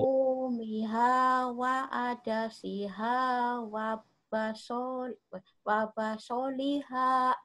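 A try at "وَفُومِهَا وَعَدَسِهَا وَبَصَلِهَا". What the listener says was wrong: Nah, gitu. Coba lagi, jangan putus-putus.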